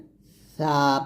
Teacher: সা উচ্চারণ করার সময় জিহ্বার আগাটা উপরে দাঁতের আগা লাগাতে হবে। তাহলে এটা হবে সা, পাতলা করে বাতাস বের করবেন, আর এটা হবে সিন এরকম, সা সিন এরকম ভাবে উচ্চারণ করতে হবে।